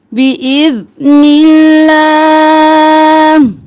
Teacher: اللہ کا لفظ باریک پڑھنا ہے کیونکہ پہلے زیر آ گیا